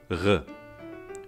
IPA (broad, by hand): ɣ